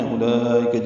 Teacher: اولئک میں حمزہ اقصی حلق سے ادا کریں گے، واو نہیں پڑھیں گے، لام پر مد متصلہ کھڑا زبر کے بعد حمزہ یا کی شکل میں ایک ہی کلمے میں آنے کی وجہ سے مد متصل بنی ہے۔